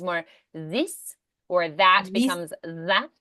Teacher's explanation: It's more rounded and pronounced at the front of the mouth. So, like the TH becomes a Z or a D.